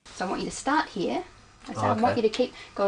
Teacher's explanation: did you hear the falling tone at the end